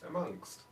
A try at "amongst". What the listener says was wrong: But there's no K in it. I can hear K. Well, you said it with a K just now. Amongst.